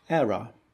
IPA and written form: ˈerə (error)